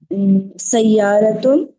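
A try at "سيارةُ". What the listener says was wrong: سیارتن نہیں ہے، سیارتو ہے.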